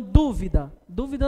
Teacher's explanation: dúvida não é a última é a antepenúltima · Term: proparoxítonas